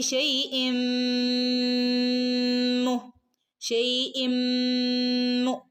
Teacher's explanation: തൻവീന് ശേഷം മീമു വന്നാൽ നമ്മൾ പഠിച്ചതാണല്ലേ, ഇദ്ഗാം ബിഉന്ന, മണിച്ചു കൂട്ടിച്ചേർത്ത് ഓതുക. സാക്കിനായ നൂനിനോ തൻവീനോ ശേഷം മീമു വന്നാൽ മണിച്ചു കൂട്ടിച്ചേർത്ത് ഓതണം കേട്ടോ.